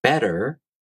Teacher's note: The flap t sound as in “better”, that’s the Japanese R sound.